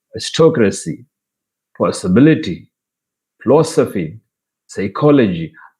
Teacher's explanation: stressed on anti-penultimate syllable that is third from the end